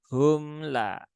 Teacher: mim sukun dia sifatnya tidak syidah Tetapi dia tawasud ya dia di antara syiddah dengan eh rakah maka tunaikan sifat